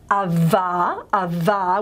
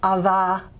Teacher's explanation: Very typical that it's much more of an approximant type of articulation. And this is to do with the problems of maintaining voicing on fricatives.